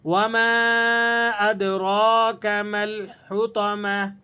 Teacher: وما ادراک، دال پہ آپ نے قلقلہ ادا کرنا ہے اور را کو موٹا پڑھیں گے، اور را کو 1 الف کے برابر کھینچ کر بھی پڑھا جائے گا کیونکہ اس کے اوپر کھڑا زبر لگا ہوا ہے